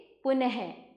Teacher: यहाँ पर आप ये दो बिंदु देख रहे हैं। जिस वर्ण का उच्चारण हल्के ह के समान होता है उसे विसर्ग कहा जाता है।